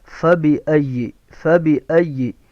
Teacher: سامنے والے اوپر کے دانت اور نچلے اونٹ کا اندرونی حصہ، یہاں سے فا ادا ہوگا